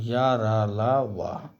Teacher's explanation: इनका उच्चारण जीभ तालू दांत और ओठों के परस्पर सटा से होता है किंतु कहीं भी पूर्ण स्पर्श नहीं होता है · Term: अंतस्थ व्यंजन